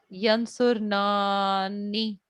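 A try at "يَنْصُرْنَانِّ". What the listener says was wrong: जी 2 हरकत और कीजिए, आप तो थक गए, सांस फूल गया लगता है आपका, रियाज नहीं कर।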